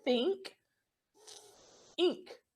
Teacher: This sound, think, your vocal cords don't move, okay? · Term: unvoiced